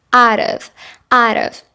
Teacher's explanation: we're going to pronounce that T like a fast D or like a rolling R sound